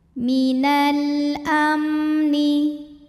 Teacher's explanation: alif lam menghadapi huruf Qomariah yaitu Hamzah maka lam sukun dibaca dengan jelas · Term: Alif Lam Qomariah